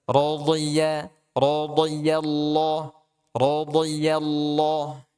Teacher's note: dho tebal, ya ya-nya dia tipis masuk ke lafzul jalalah dia tebal